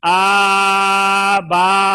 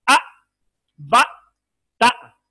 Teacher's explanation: حمزہ میں سختی ہے، آواز رکے گی